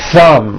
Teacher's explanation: My tongue came out, but there was never any air friction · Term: TH sound